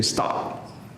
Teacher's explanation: You feel that puff puff of air. You say stop. Like no puff of air.